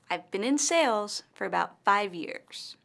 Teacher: In this sentence, the word sales and five years are stressed.